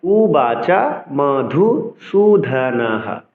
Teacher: লাইনের শেষে থাকবে বিসর্গের জন্য আমরা হ উচ্চারণ করব